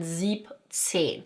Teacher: sieben, we're leaving out the 'en' part and we're just saying siebzehn